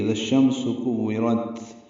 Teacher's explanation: کورت میں کاف باریک ہے، واو سے ملانا ہے، واو کو جلدی اور معروف پڑھنا ہے، را پر پڑھیں گے اور تا ساکن پہ ہمس ہوگا اور نرمی سے پڑھا جائے گا، اس میں سانس جاری رہے گی۔ اذا الشمس کورت، جب سورج لپیٹ دیا جائے گا۔